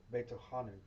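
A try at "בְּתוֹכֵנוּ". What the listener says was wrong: Not betochanu. What's that vowel? Betochenu. Betochenu.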